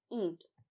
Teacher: तो यहां पर जो ईंट शब्द है यहां पर इ के ऊपर भी यह जो है वह चंद्रबिंदु ही लगी हुई है क्योंकि इसे उच्चारित करने में हमारी नाक पर भी हवा का दबाव पड़ रहा है